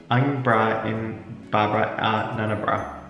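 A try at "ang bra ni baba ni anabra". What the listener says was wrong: It's not in, it's ni.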